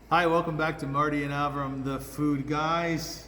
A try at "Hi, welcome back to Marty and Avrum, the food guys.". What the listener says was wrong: Can you say Marty and Avrum with a little more Marty? All of a sudden, the voice goes down. like you're bored, you're tired.